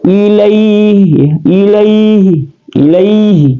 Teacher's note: dia ada huruf lin atau mad lin. Ini dibaca 2 harakat panjang